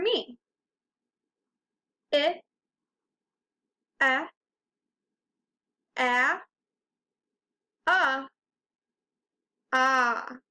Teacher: my mouth gets bigger for every one of those sounds I said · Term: short vowel sounds